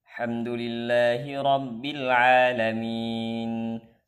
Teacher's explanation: membaca hamdulillahi rabbil alamin dengan menghilangkan dua huruf, hamzah wasal dan lam. Maka itu merupakan kesalahan jali.